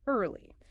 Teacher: The correct pronunciation is just two syllables. Early with the R sound gliding directly into the L sound. Your tongue should touch the back of your teeth for that final L. Early. It's a smooth two-cllable word.